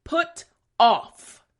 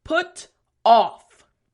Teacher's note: front teeth bottom lip for the F sound